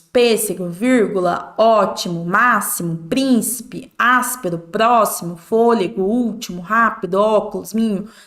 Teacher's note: são todas palavras proparoxítonas a sílaba tônica é a antepenúltima